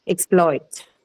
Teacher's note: So exploit then can have two different stress patterns depending on what it is used as. Okay, so if it is used as a verb, the stress is on the second syllable. Okay, exploit.